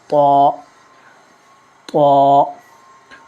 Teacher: زبان کی نوک اوپر کے دانتوں کی جڑ سے لگے تو طا ادا ہوتا ہے، لیکن اسے ہمیشہ پر پڑھا جاتا ہے اور یہ طا۔